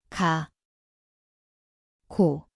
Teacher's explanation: >> Dit klink soos gekke. Die plek is die agterkant van die tong.